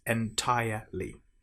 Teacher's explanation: Now make sure you don't pronounce the R in entire.